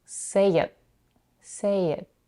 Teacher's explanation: The final t in the word it is held and not released. You can do this by only putting the tip of the tongue behind the upper teeth, but not releasing the air while pronouncing the sound.